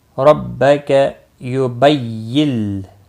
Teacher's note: را زبر کی وجہ سے پر ہوگا۔ ربک یبیل، نون ساکن کے بعد لام ادغام ہوگا لیکن گناہ نہیں ہوگا۔